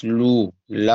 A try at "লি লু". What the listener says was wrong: সুন্দর হয়েছে